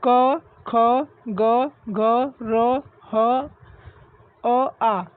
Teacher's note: ये सब हमारा कंठ से आवाज़ आती है, हमारे कंठ बिल्कुल अंदर से आवाज़ आती है